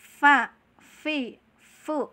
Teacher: cara pengucapannya adalah gigi kelinci kita yang dua itu tempelan keperut bibir bawah